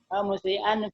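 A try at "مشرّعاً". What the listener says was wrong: Ini bukan musyri'an ya, lebih ke musyarri'an ya.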